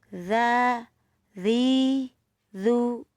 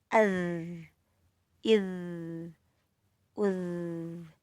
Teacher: Dzal itu mahrajnya di ujung lidah bertemu dengan ujung gigi seri atas.